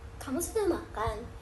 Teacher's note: Contohnya pada kalimat seperti kamu sudah makan yang memiliki nada naik di akhir.